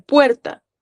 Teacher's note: puer tiene dos vocales en una misma sílaba, la u y la e. Una cerrada y una abierta.